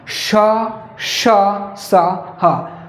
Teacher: लेकिन जब इन वर्णों को आप बोलेंगे, इनका उच्चारण आप करेंगे, तो जो मुंह से हवा भी निकलेगी तो वो जो है रगड़ के निकलेगी, रगड़ खा के निकलेगी, घर्षण होगा उसमें, गर्मी होगी उसमें। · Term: ऊष्म व्यंजन